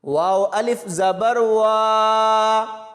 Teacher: واو کو آگے الف کے ساتھ ملائیں گے اور لمبا کر کے پڑھیں گے